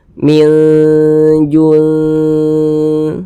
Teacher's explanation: minnya kita samarkan nah kemudian kita dengungkan jadi kita panjangkan sepanjang dua harakat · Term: Ikfa Hakiki ausat